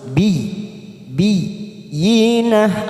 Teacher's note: masuk pada huruf ya yang bertasjid tanpa ditekan lama-lama